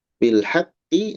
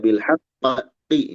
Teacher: bilhaqqi. Nah, ketika disambung ee di sana tidak ada qalqalah, kita hanya hentakan bilqiq.